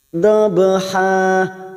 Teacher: Ha kita panjangkan 2 harokat, dan ini yang disebut dengan hukum bacaan mat iwad